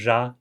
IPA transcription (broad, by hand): ʒa